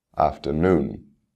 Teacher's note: You can see this word has three syllables. The stressed syllable is the last syllable, the unstressed syllable is the middle syllable, and the secondary stress falls on the first syllable.